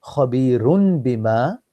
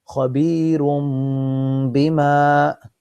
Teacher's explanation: we will not read khabirun bima, we will read as khabirum bima with two harakat, not just khabirum bima. · Two haraka with the sound through the nose. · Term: Iqlaab